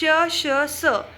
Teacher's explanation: श, श, स म्हणताना तोंडातून उष्ण बाहेर पडते, म्हणजेच यांना उष्ण स्वर म्हणतात.